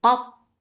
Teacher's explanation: Ta will get sifa of shidda. There will be no flow of sound but ta will be heavy and there will be itbaq.